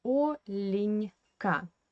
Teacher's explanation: this Е is an unstressed weak position without stress, and we pronounce, according to the Russian phonetics law, we pronounce this Е as I